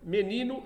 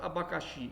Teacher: menino é paroxítona abacaxi é oxítona